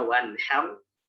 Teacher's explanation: Wanhar dan abtar itu ra tafkhim ya, karena dia sebelumnya adalah fathah